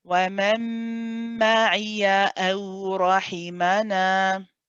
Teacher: after the ya, nice sharp hamza